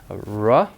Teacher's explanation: There's no friction no contact or anything it's just air moving around the tongue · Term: glide sounds